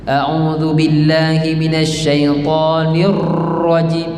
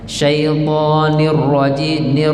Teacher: Itu dia jadi takrir dia, getaran terlampau banyak. Nir tak boleh.